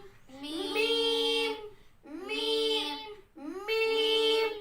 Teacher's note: बंद होठों के खुश्क हिस्से से लगाकर अदा होता है